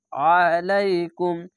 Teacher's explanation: আলাইকুম আ যদি বলেন তাহলে আলিফের মতো উচ্চারণ হয়ে যায়, তার জন্য আলাইকুম মোটা করে গলা চিপে পড়বেন